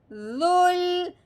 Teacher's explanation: اوپر والے دانت نیچے والے دانتوں کے درمیان میں ہلکی سی زبان کی نوک باہر کو آئے گی